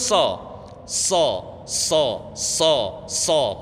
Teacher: pangkal lidahnya naik suaranya tampak menggembung di dalam